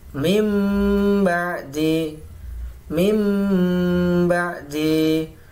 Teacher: Bacaan dibaca iqlab atau menukar apabila nun sukun atau tanwin bertemu dengan huruf ba, maka nun sukun atau tanwin beralih atau ditukar atau diganti menjadi mim sukun